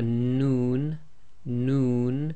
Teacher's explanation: your your lips actually go a bit round with the noon · Then we have a Noon, Noon. So again, the tip of the tongue pressing on the front hard palate. Your lips actually go a bit round with the Noon